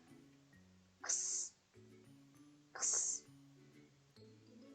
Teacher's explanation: 이를 맞물린 상태에서 성대를 울리지 않고 바람 소리로만 x 하고 소리를 내시면 됩니다